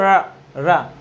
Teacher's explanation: ऐसे व्यंजन जिनको बोलने पर जीभ पीछे की ओर लुढ़कती है, लुंठित व्यंजन कहलाते हैं।